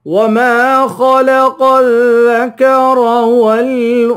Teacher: خا اور قاف کو پر پڑھیں گے یعنی موٹا پڑھیں گے